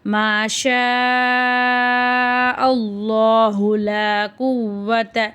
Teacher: அல்லாஹ் என்ற வார்த்தைக்கு முன்னாடி ஜபர் இருக்கு அல்லாஹ் என்ற வார்த்தையை வல்லினமா ஓதணும்